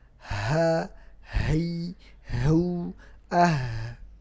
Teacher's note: sifat yang pertama adalah Hames kan dia ada nafas yang keluar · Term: hams